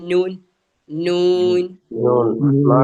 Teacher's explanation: അപ്പൊ എവിടെയാണ് നമ്മുടെ നാക്ക് തട്ടുന്ന? നാക്ക് തട്ടുന്ന മേൽമുൻപല്ലിന്റെ കുറച്ച് മുകളിലായിട്ട് തട്ടുന്നത് അതാണ് ഊൻ എന്ന് പറയും.